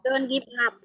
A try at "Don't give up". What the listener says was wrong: Don't give up. Jangan dipisah. Don't give up. Jangan. Disambung. Give up. Don't give up. Ya, jangan diputus.